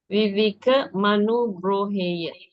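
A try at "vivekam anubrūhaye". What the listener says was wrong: Bruhaye. Not hey. Bruhaye.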